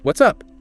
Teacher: Enthusiastic, short, maybe a clear rise-fall intonation for that casual inquiry, what's up?